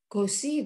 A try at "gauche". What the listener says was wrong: Bu, enggak, jangan baca bahasa Inggris. Ini sh. gosh, betul. Kalau Inggrisnya mungkin jadi nah gitu.